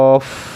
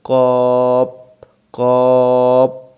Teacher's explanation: কফ বলার সময় শেষে বাতাস বের হতে হবে। আমরা অনেকে এটাকে ভুল করি, কপ কপ না, কফ।